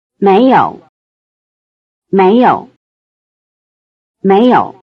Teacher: the basic low tone of yǒu (to have) becomes the neutral tone in méiyou